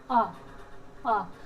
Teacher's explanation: आ में देखो, आप बोल के देखोगे आ, आपका मुंह पूरा खुलेगा, पूरा खुलेगा तो कौन सी श्रेणी है? विवृत, विवृत होगी आ की श्रेणी